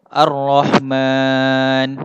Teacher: Okey, dekat kalimah man tu, itulah dinamakan mad arid li sukun. Kita matikan no tu. Asalnya Ar-Rahmanu, tapi kita wakafkan pada kalimah tu, dia akan jadi Ar-Rahman.